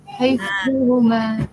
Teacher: Azim tu lidah kena dekat gigi. Huruf dha dia punya makhraj dia dekat lidah. Lidah dia dekat gigi.